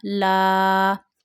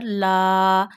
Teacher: We have to stretch la here because when zabar come before al if at the preceded letter then you stretch alif because of zabar at the preceded letter up to one finger